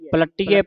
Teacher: ਕਾਇਆ ਫਿਰਿ ਪਲਟੀਐ ਪਲਟੀਐ ਪਾਠ ਵੀ ਕਸ ਕੇ ਪਲਟੀਏ ਨਹੀਂ ਕਹਿਣਾ ਪਲਟੀਐ ਅਧਕ ਲਾ ਕੇ ਕੱਸ ਕੇ ਬੋਲਣਾ